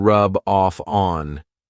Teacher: I'm taking the F from off and adding it to On